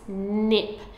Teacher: even the word nip has a continuant sound at the start what that means is that is a stretchy sound they're easier to blend than stop sounds so easier to blend